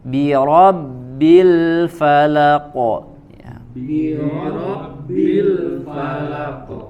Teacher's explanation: Bi ro ya, kemudian ro-nya tebal, bi-nya tidak ikut menjadi tebal